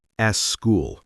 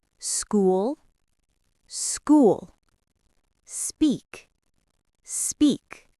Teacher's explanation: The word school is school, not s school. There is no e sound at the beginning.